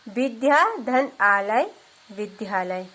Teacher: दीर्घ और दीर्घ मिलके भी दीर्घ ही हो जाएंगे। आ धन आ बराबर आ। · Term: दीर्घ संधि